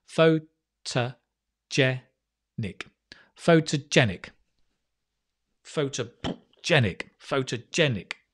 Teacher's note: There's a secondary stress on the pho at the start, so it's not the, it's pho.